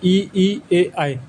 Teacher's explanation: अग्रस्वर, जिन स्वरों के उच्चारण में जीभ का अग्रभाग काम करता है